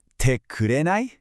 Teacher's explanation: You really say it with a rising tone at the end.